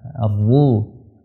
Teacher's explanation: Ra-nya tebalkan. Ra ketika dhamma, ketika fathah ini ditebalkan.